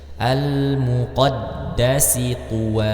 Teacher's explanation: huruf dalnya bertasdid maka Dibaca juga kuat seperti huruf ba ya karena dia memiliki sifat syiddah